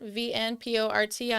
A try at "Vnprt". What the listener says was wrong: Oh, Vnprt. Without the vowels.